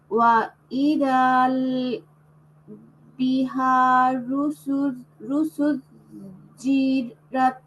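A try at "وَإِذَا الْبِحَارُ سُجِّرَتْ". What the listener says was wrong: বিহারু পর্যন্ত আসো, বিহারু, তারপরে সুজ্জিরত আলাদা করো। ওয়া ইদাল বিহারু সুজ্জিরত।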